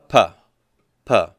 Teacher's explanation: what is happening to the airflow it's getting completely blocked right and that's why these are technically called stops